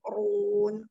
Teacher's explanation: ro-nya berharokat doma dibaca tafkhim di yashkurun terakhir di mad tabi'i yang diwaqafkan hukumnya mad arid